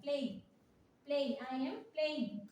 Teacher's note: ए के बाद ई में जंप करना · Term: डिफ्थॉर्म